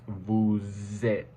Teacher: links the two words together so instead of saying boo eight the S makes a z sound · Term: liaison